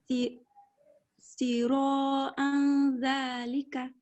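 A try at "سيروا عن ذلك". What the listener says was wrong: No problem with ikhfa, but ayn little bit stress on it. Sira. Not a.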